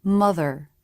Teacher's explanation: at the end of a syllable the lip position for the r is definitely more relaxed than a beginning r but the lips still flare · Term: ending R